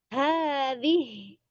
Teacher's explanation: Anta bida hadhihi abada. Kalau mau berhenti di hadhihi itu jangan dibaca hinya. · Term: langsung sukun